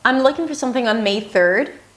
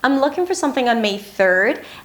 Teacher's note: this rising intonation at the end of a sentence, even if it's not a question, is a very common speech pattern in America nowadays